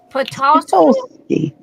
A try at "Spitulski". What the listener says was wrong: Spitulski. No, I'm pronouncing the S. Spitulski, like spit. Olski.